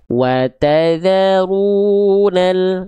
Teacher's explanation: Ketika teman-teman mendapati ada bentuk seperti alif dan lam yang saling bersandingan seperti ini, lalu di atas lamnya ditandai dengan tanda sukun atau tanda mati, maka namanya alif lam qomariyah. Cara bacanya diizharkan huruf lamnya, dijelaskan huruf lamnya. Makanya langsung masuk ke huruf lamnya.